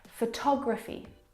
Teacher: photography you can hear the pronunciation is different and that's because the second syllable is the stressed syllable in this word